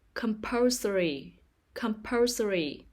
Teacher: The stress is on the second syllable, compulsory.